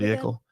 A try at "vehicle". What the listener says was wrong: You pronounce the H so harshly. You're like vehicles.